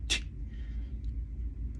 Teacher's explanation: And I say dental because I put my teeth together, and as the air is blowing, I stop the flow of air with the tip of my tongue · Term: dental alveolar plosive